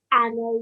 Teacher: And if you had noticed, if you're listening really carefully, you would have noticed I said ana. I did not elongate this nun, even though there is a blank alif here, which in normal circumstances would be considered an alif madda.